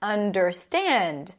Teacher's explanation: In the word understand, the primary stress is at the end.